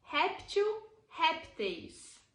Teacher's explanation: Por exemplo, réptil, répteis. Veja que réptil é uma palavra que é paroxítona, ou seja, a penúltima sílaba é a sílaba tônica.